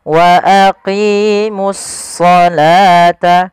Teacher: kita namakan dengan alif lam syamsiyah, yaitu suaranya kita langsung ke huruf shadnya. Wa aqimus salata.